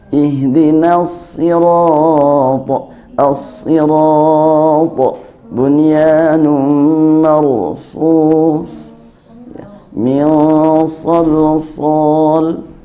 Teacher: Dan udara sewaktu mengucapkan shad bebas, lepas, jangan sampai tertahan. Ihdinas sirata as-sirata bunyanun marsus min salsal, bukan as-sa tapi as-sa, keluarkan bebas.